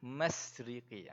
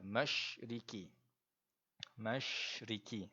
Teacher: Kita kena sebut shin tadi tu seolah-olah ada hemburan. Seolah ada hemburan daripada mulut kita. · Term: huruf shin